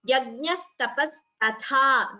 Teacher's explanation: The second tha is mahaprana. First tha is alpaprana. So that should be chanted clearly without interchanging.